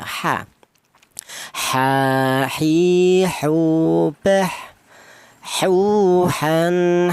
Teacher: huruf H ini keluarnya huruf berasal tenggorokan bagian tengah